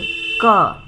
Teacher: तो क का उच्चारण स्थान है कंठ, क। तो क में गले से आवाज़ आती है